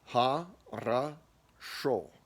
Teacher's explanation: So with this letter O, a great word to illustrate how it gets reduced. There are 3 O's in the word ha-ra-sho. Only the last O is said as an O. Now, if you were going to say it with all of the O's as O's, it would be ho-ro-sho, which we all know is wrong. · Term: vowel reduction